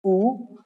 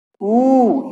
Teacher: ये ऊ इसको बोलने में कम समय लगता है, जबकि ये जो पूंछ वाला ऊ है इसको बोलने में ज्यादा समय लगता है, इसलिए इसे बड़ा ऊ बोलते हैं। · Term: छोटा ऊ और बड़ा ऊ